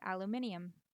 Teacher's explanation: some people say aluminium which is an addition of a non-existent syllable